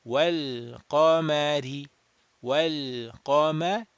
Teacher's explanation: Ra with a kasra would be flat. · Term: Ra muraqqaq, flat